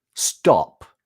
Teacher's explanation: Now, for most other accents, there would be a difference between the T in top and the T in stop, because in stop, the T doesn't aspirate